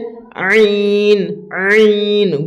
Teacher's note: গলাটা চাপ দেওয়ার মতন করে একটু একদম গলা থেকে বের করতে হবে, ভিতর থেকে হালাক থেকে বের করতে হবে